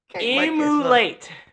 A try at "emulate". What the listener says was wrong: No, you said ugh. It's emulate. Get a deep voice with it.